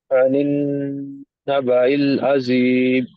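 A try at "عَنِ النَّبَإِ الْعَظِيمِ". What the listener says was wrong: ఇక్కడ నూన్ మీద ఏం చేశారు మీరు? గున్నా చేశారు, అవునా? ఇక్కడ షంసియా పదం కాబట్టి నూన్ కసరా తీసుకుని వెళ్ళి నూన్తో కలిపారు, లామ్ సైలెంట్ చేశారు. ఇక్కడ ఆ, కమరియా పదం కాబట్టి హంజా కింద కసరా తీసుకుని వెళ్ళి లామ్ సుకున్తో కలిపారు. ఇక్కడ లామ్ చదివారు మీరు, ఇంకోసారి చదవండి.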